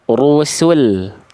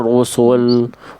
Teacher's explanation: Rusul sinnya tipiskan dan lamnya tipiskan.